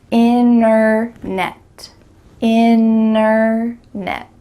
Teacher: when native speakers are speaking quickly, we're gonna cut out that T completely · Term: middle T